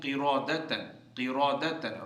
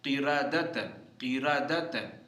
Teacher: را کو موٹا پڑھتے ہیں، لیکن یہاں باریک پڑھیں گے